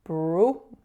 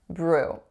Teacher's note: It's a moving vowel, and most of my clients make it a pure oo sound, but it's not